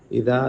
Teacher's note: دال پڑھتے ہوئے زبان نکالیں